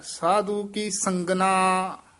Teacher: ਸੰਗਨਾ ਇਕੱਠਾ ਹੀ ਬੋਲ ਦੇਣਾ ਸੰਗ ਨਾ ਵੱਖਰਾ ਨਹੀਂ ਕਹਿਣਾ